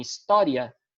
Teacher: Então, aqui é crescente porque o I tem o som mais fraco, é semivogal, e o A tem o som mais forte. Por isso, ditongo crescente.